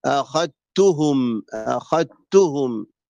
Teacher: الذال ما هي موجوده ادغام كامل كان الذال ليست موجوده همزه فخاء ثم تاء هاء ميم